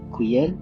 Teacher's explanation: On peut avoir aussi des tons qui rassemblent plusieurs intonations, comme avec quyen, qui désigne alors des documents et a une intonation descendante puis montante